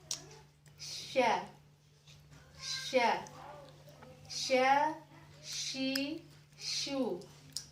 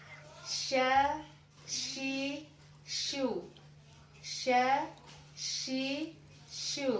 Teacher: Nah, banyak kesalahan orang yang membaca huruf sya ini, dia keluar dari asyafatain sampai berkumpul lidah itu ya, sampai sya. Sya itu bukan huruf asyafatain, jadi tidak boleh terlibat bibir kita untuk mengucapkan huruf sya. Tapi keluarkan dari tengah lidah, gigi sari kita rapat saja, menempel saja.